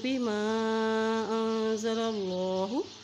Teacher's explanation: اللہ کا نام موٹا عطا کریں گے کیونکہ اللہ کے نام سے پہلے زبر ہے